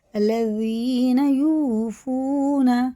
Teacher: واو ساکن سے پہلے پیش، الٹے پیش کی طرح اسے کھینچ کے پڑھنا ہوتا ہے ایک الف کے برابر